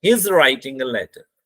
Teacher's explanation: लेटर में हमारी आवाज डाउन आ रही है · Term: फॉलिंग टोन